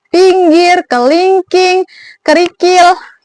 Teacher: Jadi ada juga ada juga vokal I yang posisinya itu tinggi, posisi lidahnya tinggi bawah, menggunakan lidah bagian depan. Posisi mulutnya itu semi tertutup.